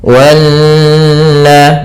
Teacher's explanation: Di sini ada bacaan namanya gunnah, yaitu nun yang bertasydid. Cara membacanya menahankan dulu sepanjang 2 harokat sampai 3 harokat. Wanna, baru dilepaskan.